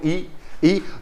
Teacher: आप बोल के देखो ई, तो जीभ का पहला हिस्सा मतलब आगे का हिस्सा ही काम करेगा आपका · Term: अग्रस्वर